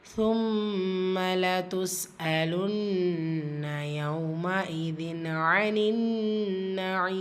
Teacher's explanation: ثُمَّ மீம் முஷத்ததா இந்த இடத்துல குன்னா செய்யணும்.